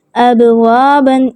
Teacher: ابوابن یعنی کلکلہ کریں گے لیکن ہلکی آواز میں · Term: کلکلہ صغریٰ